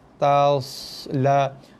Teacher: Sod kita baca tebal Sod tebal dan ada bunyi desiran yang tebal.